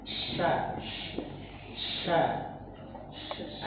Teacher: Huruf shin itu dia dari tengah lidah. Jadi bibir itu nggak ada sangkut pautnya. Jadi dia fokus di tengah lidah.